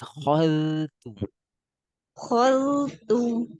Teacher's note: Baca khol tu saja, kho tebal, zal tipis. Khol tu. Khaltu Lagi lebih tipis.